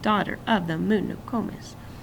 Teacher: the author used trochaic stressed followed by unstressed to replicate the sound of a drumbeat